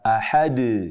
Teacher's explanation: mengucapkan qolqolah dengan kadar berlebihan, sehingga seperti memanjang mad